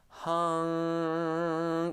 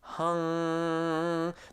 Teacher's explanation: The tongue is lifting in the rear of the mouth, and it is in fact closing off airflow to your mouth. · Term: NG sound